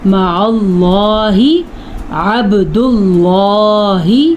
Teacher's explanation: اللہ کے نام سے پہلے پیش آ جائے تو بھی اللہ کا نام پر پڑھنا ہے